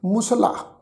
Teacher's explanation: ਲੱਲੇ ਅੱਖਰ ਦੇ ਉੱਪਰ ਬਲ ਦੇ ਕੇ ਅਸੀਂ ਪ੍ਰੋਨਾਊਂਸ ਨਹੀਂ ਕਰਦੇ